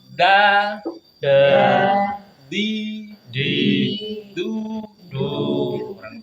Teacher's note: tempelkan lidah kita di ee belakang ya belakang gigi seri kita kenakan bukan di giginya kenakan di tempat tumbuh giginya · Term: huruf da